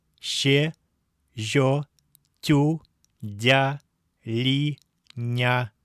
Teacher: Перед буквами «е», «ё», «и», «ю», «я» и мягким знаком эти согласные мягкие, в остальных случаях твердые. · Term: мягкими, точнее палатальными